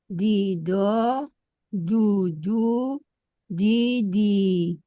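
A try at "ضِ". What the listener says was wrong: Nah, jangan didit, masih tipis.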